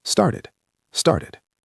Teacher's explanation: And notice the past tense in started. It ends with an id sound because the root word ends in a t.